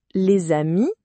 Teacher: on entend clairement le z entre les deux mots